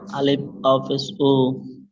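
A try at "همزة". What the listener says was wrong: আলিফ নয় কি বলেছিলাম যখন আলিফের উপরে জবার জের পেশ যখন চলে আসবে তখন সেটাকে হামজা বলতে হবে আলিফ আর বলা যাবে না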